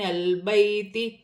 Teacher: یا ساکن سے پہلے زبر ہے، یالین بن رہی ہے، اسے کھینچا نہیں جائے گا۔